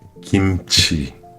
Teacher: L'erreur fréquente des français, mettre trop de souffle sur ce son et le transformer involontairement en en kirque. Pas de souffle. Laisser la langue faire le travail toute seule.